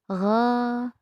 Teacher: Dibaca antara o dan a, tidak gho, tidak o, tidak gha, tidak a, tetapi antara o dan a. Gha juga dibaca tipis. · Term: huruf isti'ala